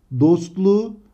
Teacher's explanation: Bakın K sesi yumuşayarak yumuşak G'ye dönüşmüş. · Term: ünsüz yumuşaması